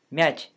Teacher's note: But watch what happens when both sides are palatalized. In the word for wrinkle, mech, the vowel is pronounced higher.